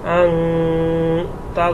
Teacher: এখানে নুনে সাকিনের পরে ইকফার হরফ তা আসছে, জন্য এখানে গুণনা করে পড়তে হবে।